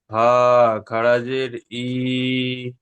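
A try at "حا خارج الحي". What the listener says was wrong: হা খাড়াজের, হা খাড়াজের ই হবে না, হা খাড়াজের হি,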